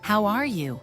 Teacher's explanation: if you say it with a friendly Rising tone how are you it sounds warm and natural